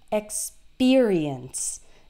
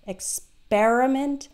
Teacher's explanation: the PE R sounds like peer yeah instead of per